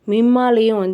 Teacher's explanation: 'மிம்மா'விலும் மீம் மீது ஷத்தா இருப்பதால், நாம் குன்னத்துடன் ஓத வேண்டும்